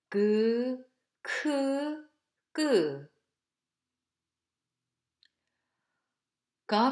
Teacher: Tongue back touching the soft palate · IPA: /k, g/